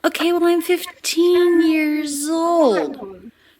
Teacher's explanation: 15 and old, a little bit longer, a little bit more stressed. The T here is a true T because it starts a stressed syllable, 15.